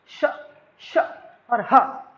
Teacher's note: ऊष्मी वो होते हैं जिन्हें बोलने के लिए घर्षण करना पड़ता है, यानी जिन्हें बोलते समय हमारे मुंह से क्या जो वायु है वो गर्म निकलती है बाहर। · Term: ऊष्मी व्यंजन